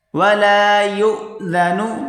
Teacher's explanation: یہاں پر تھوڑا جھٹکا دے کر پڑھیں گے یا اور حمزہ کے بیچ یا حمزہ پیش یو یا حمزہ پیش یو یہاں پر واو